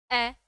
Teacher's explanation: अ हमारी जी्हा कहीं भी नहीं आई। ना आगे ना पीछे। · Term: मध्य स्वर